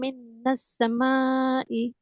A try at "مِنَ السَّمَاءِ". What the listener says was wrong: মিনাস সামাই একসাথে হবে, মিনাস সামাই একসাথে হবে, হ্যাঁ।